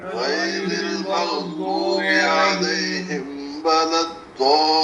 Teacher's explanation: لام پہ تھوڑی دیر رکیں گے بھی، شد ہے نا